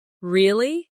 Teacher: when they are surprised, their voice goes up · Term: intonation